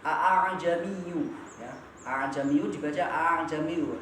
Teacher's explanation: meringankan bacaan hamzah kedua dengan bunyi leburan hamzah dengan alif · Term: tashil